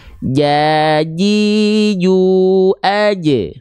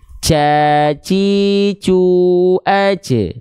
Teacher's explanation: dia dilafalkan dari tengah lidah yang disentuhkan dengan langit-langit. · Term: huruf jim